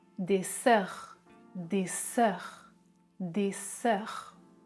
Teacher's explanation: Je prononce des sœurs. Les cordes vocales ne vibrent pas. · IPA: [s]